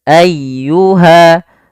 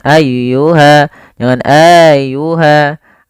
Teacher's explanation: dia ditekan y-nya dengan lembut